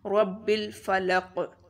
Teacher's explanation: با کے اوپر شد ہے، اس کو زور سے پڑھیں گے · قاف موٹا پڑھیں گے اینڈ پر، اور قاف پر قلقلہ ہوگا